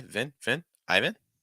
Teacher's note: No stress on first syllable. You start with that extra heavy I sound, and then Vin with a short I.